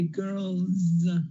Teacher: that L has vibration of the vocal cords